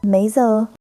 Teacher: with a slight upward lilt